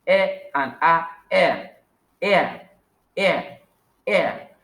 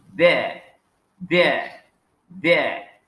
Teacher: So we go to the number 7 of the diphthong sound, where we have the two vowel sounds again, which are e and a